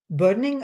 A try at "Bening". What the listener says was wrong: It's like the actress Annette Bening, the O is silent.